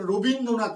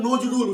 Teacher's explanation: র এর সঙ্গে অ আছে, অ ধ্বনি আছে, আমরা উচ্চারণ করছি ও ধ্বনি। আমরা নজরুল, দন্তের নজ, নজ, আমরা নজ উচ্চারণ করি না, আমরা নজরুল উচ্চারণ করছি, দন্তে নয় ওকার করছি।